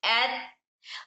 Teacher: इसके मखरज में आवाज को रोक के रखेंगे, जैसे एट एट, आवाज रोक के रखे एट, उसके साथ साथ हम्स आने की वजह से हवा जारी हो रही